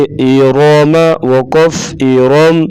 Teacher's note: را کے اوپر زبر، را کو پر پڑھیں گے